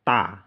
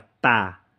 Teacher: Kalau T titik bawah itu ujung lidahnya diangkat ya, jadinya tebal, bunyinya tebal. Ta ya, ujung lidahnya diangkat, ta.